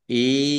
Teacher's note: nun sukun bertemu dengan huruf ya, bacaan idgham bi gunnah, masuk dengan mendengung, yaitu mendengung ya. Maka ditahan yaknya.